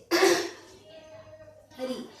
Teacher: तो इन वर्णों को उच्चारण करते समय हमें ये ध्यान देना है कि हमारी जिह्वा जो है वो दंत और तालु के बीच में स्थित मूर्धा को स्पर्श करे, तभी आपकी इन वर्णों का सही उच्चारण होगा।